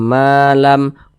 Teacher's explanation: dengan huruf mim atau huruf mim sukun setelahnya huruf mim maka hukumnya idgham mimi maka dibaca berdengung jadi suaranya itu kita tahan kita panjangkan